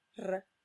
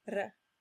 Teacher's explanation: there are 2 possible pronunciations for the letter R in Italian. One is the trilled R, R. The other is the flipped R, R.